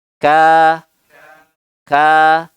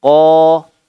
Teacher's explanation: kalau Kaf ada angin ingat-ingat ka kalau qof berbeda jangan sampai ada angin yang keluar